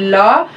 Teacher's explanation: हमारी टंग ऊपर की तरफ टच हो रही है और साइडों में जगह है, वहां से जो एयर है वो रिलीज हो रही है, साइडों में से रिलीज होके आती है, तो ऐसे साउंड्स को हम लेटरल साउंड कहते हैं। · The air escape along the sides of the tongue, तो जो एयर है वो टंग के साइड्स में से आके रिलीज होती है। The sound produced in this manner is known as lateral sound.